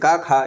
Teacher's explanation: क वर्ग जो भी होता है वह कंठ से बोला जाता है